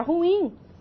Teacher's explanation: Nós temos a palavra ruim, uma palavra que é dissilábica, e a sílaba tônica é a última, é o in. Então, nós temos aí uma sílaba prosódica indicando que a palavra é uma oxítona.